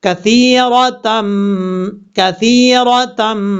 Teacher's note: یہاں پر غنہ کریں گے ایک الف کی مقدار، کیونکہ دو زبر کی تنوین کے بعد با آ رہا ہے